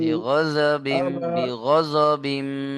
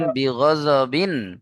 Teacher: বিনা গুন্নায় জাহির করে পড়তে হবে তানমিনকে